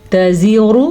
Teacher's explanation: را کو پر پڑھنا ہے کیونکہ را پہ پیش ہے